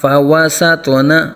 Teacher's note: نقعا فأثرن به نقعا. فوسطن، واو ہونٹوں کی گلائی سے اور توا ساکن میں قلقلہ کریں گے اور توا کو پر پڑا جائے گا.